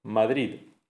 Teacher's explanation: la pronunciación de la D final de palabra es extremadamente débil. Eh, es una realización superrelajada, apenas perceptible.